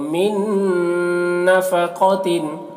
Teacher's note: تو ساکن والے حرف کو نہیں پڑھتے ہیں، ٹھیک ہے، تو میم کو نون سے ملا کر پڑھیں گے اور نون میں غنہ کریں گے کیونکہ نون مشدد ہے